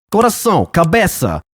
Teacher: It's always a voiceless S sound.